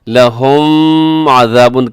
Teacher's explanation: لہم میں میم ساکن کے بعد عین ہے تو یہاں اظہار شفوی ہے